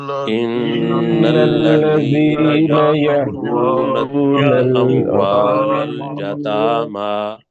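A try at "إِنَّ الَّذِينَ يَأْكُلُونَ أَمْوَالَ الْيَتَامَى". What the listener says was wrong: جی میں دوبارہ کہہ رہا ہوں، نون کے اوپر شد ہے، اس کو 2 حرکت کے برابر لمبا کرنا ہے.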